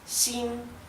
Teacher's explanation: No es ni shin ni shin, es sin a causa de que el tono alto en la I indica que se pronuncia así